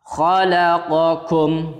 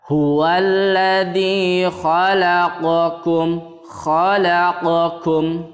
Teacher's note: tempat keluarnya huruf qaf dan kaf itu sangat berdekatan